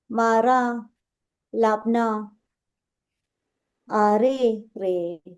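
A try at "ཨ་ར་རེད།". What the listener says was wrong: Ara. There is no kiku here.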